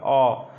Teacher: जब आप अ बोलते हैं तो आपकी जीभ ऐसे बीच में एक जगह रुक जाती है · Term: मध्य स्वर